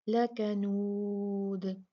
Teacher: जब हम रुकते हैं और इसको साकिन करते हैं तो तब भी हम कलकला ही करेंगे